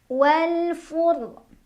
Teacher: ro-nya dibaca secara tafkhim karena ro-nya sukun dan huruf sebelumnya berbaris di atas ya, jadi bacanya tebal.